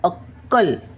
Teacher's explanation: अक्कल कला क जोडला मग कसा उच्चार करायचा अक्कल काय अक्कल असा क वर जोर द्यायचा डबल आहे ना